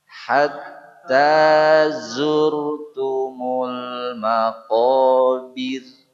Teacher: maqobir enggak boleh bir jadi betul-betul i nyengir ya